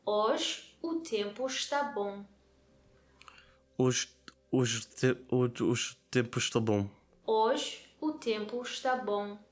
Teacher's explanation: we weren't stressing every single syllable there. We were stressing at regular intervals. So because the word está is not stressed, it gets reduced down to the sound está, está.